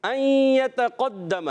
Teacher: قاف اس میں پر رہے گا، بقیہ سارے حروف باریک رہیں گے